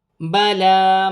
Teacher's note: لام پر خڑی زبر ہے، ایک الف کی مقدار کھینچ کر پڑھا جائے گا